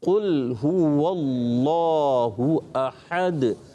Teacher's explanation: احد میں ہا جو ہے حلق کے درمیان والے حصے سے